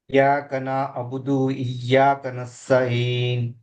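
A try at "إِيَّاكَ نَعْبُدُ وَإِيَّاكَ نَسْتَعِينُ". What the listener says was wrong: ఈ అనేది మీరు నాకైతే వినపడలేదు, దీన్ని కొంచెం క్లియర్గా స్పష్టంగా పలకాలి. ఈ ఇయ్యాక. ఈ అనేది క్లియర్ కావట్లా. ఈ ఈ ఇయ్యాక.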